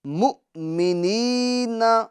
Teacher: یہاں پر یا مدہ ہوگا، یعنی اس کو ایک الف کی مقدار ہم کھینچیں گے